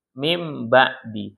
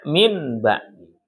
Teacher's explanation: Karena berubah dia enggak ada N lagi berubah jadi M. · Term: iqlab, iklab